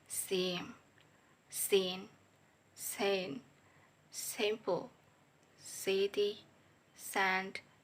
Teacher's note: voiceless alveolar fricative sound sa